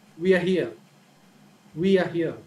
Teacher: the falling tone right we are here we are here so in the beginning the tone is high but as we move forward the tone is lower